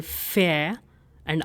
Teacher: So we have FA sound in it. So we'll say fair and R is silent. Fair. And then we have the diphthong EI ending in I.